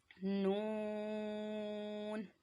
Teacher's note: ज़बान का जो हमारा किनारा है वो ऊपर ताल्लुक़ की जो ऊपर वाला हमारा जो ज़बान का किनारा है वो दांतों की जड़ के ऊपर ताल्लुक़ के जाने वाले हिस्से से अदा होता है।